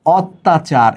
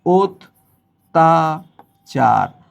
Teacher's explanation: আদ্য অ এর পরে যদি জফলা যুক্ত ব্যঞ্জন বর্ণ থাকে অর্থাৎ শব্দের বর্ণটা যদি অয়ে শুরু হয় অর্থাৎ ওই ব্যঞ্জনের সাথে অ থাকে অথবা ডাইরেক্ট অ থাকে তাহলে কি হবে পরবর্তী বর্ণে যদি জ ফলা থাকে তাহলে শুরুর অটা ও রূপে উচ্চারিত হবে